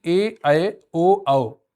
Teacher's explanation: ए ऐ ओ औ को संयुक्त स्वर कहा जाता है। ये दो भिन्न स्वरों के मेल से बनते हैं, जैसे आ ई को ए बन गया, आ उ ओ बन गया।